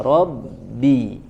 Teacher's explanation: Di huruf ba bertasydid ya tidak dipantulkan dulu, jangan robbi, jangan seperti itu, tahan di makhrajnya robbi ya langsung.